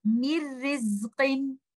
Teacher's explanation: we completely merge the sakin letter noon into ra or lam, and we will not hear any gunna or nasal sound. So this will be without gunna or bighair gunna. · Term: idgham of noon sakina